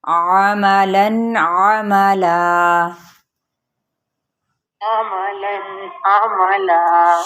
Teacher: عین کو اپنے وسط حلق سے ادا کرنا ہے، تو آپ نے تھوڑا سا سیدھے کمر سیدھی کر کے، تو گردن تھوڑا سا اونچا کر کے آپ دیکھیے گا.